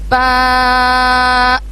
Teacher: اس کے بعد نیکسٹ لفظ ہے ہمارا با. اس میں ہم دونوں ہونٹوں کو اچھے سے جڑائیں گے اور پھر ادا کریں گے